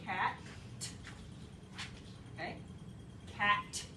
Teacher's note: a voiceless alveolar stop